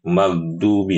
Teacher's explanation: huruf ghain yang sukun sering dibaca huruf G